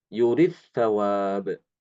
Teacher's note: Imam Ibnu Amir mengidghamkan dal ke sa